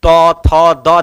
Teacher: जो भी त वर्ग है सब में दांत में जीभ टकरा है, तो दंत हो जाएगा